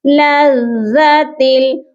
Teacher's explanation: یہاں پر ہم تا کو جب لام کے ساتھ ملائیں گے تو ہماری آواز ناک میں نہیں جانی چاہیے۔ یہاں پر جو قاعدہ لگ رہا ہے اس قاعدے کا نام ہے ادغام بلا غنہ، یعنی کہ وداؤٹ غنہ آپ نے یہاں پر ملا کر پڑھنا ہے۔